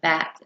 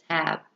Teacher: The b sound is a voiced stop sound. · A stop consonant sound is a non-continuous phenom where the flow of air stops completely for a short time. The p and b sounds are produced by the lips. These are bilabial sounds.